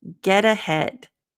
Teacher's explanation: of it follow up follow up get ahead so this one we've got that half te kind of a flap te in this case so it's not get